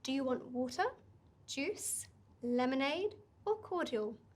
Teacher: want you can have 10 things in the list that's fine you lift lift lift lift lift but the last one you bring down